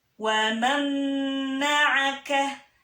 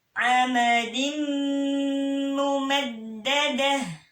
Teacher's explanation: jadi langsung dia ditarik ya, masuk masuk ke huruf berikutnya dan didengungkan 2-3 harkat ya. Jadi ditahan 2-3 harkat ya, supaya dia sesuai dengan hukumnya tadi ya, dengung ya. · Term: idgham bigunnah